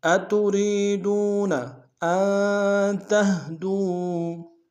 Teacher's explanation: میں نون ساکن غنہ کریں گے، تا کو ہا کے سامنے آئیں گے، نرم سے ادا کریں گے